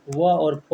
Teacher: दंतोष्ठ यानी दांत और ओंठ दोनों से मिल करके व और फ बोले जाते हैं।